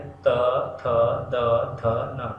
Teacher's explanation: देखिए जैसे अगर हम बोलते हैं त, थ, द, ध, न, देखिए दोनों दांत सटने की कोशिश करते हैं और जीभ वहाँ पे जाके दोनों दांतों को, ऊपर और नीचे के दांतों को टच होती है, इसीलिए इन्हें दंत ध्वनियाँ कहते हैं, क्योंकि ये दांत से बोले जाते हैं।